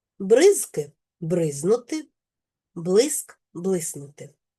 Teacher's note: В групах приголосних зкин. Скин спрощується середній приголосний к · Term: спрощення